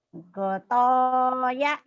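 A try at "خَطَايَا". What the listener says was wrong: Kho bukan goto. Khotoya. Khotoya. Khotoya ma'aba.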